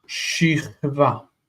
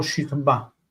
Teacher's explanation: Shichva or shichba, depending on if you harden the bet. According to the tendency of the language, because this is reduced, it would be likely that the bet would not be hardened and that this is a medial shva.